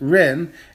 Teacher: our third character is ren and that is a falling tone that is a falling tone and that is a fourth tone character